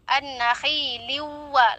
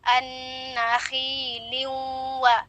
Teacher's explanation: Yaitu masih menyisakan sifat daripada huruf sebelumnya, yaitu tanwin atau nun sukun itu. Jadi peleburannya itu tidak sempurna, masih menyisakan daripada sifat huruf sebelumnya. Kesalahan ketika kita membaca bacaan ini yaitu an-nakhi liwa, langsung ke makhrajnya wa. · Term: idgham bi gunnah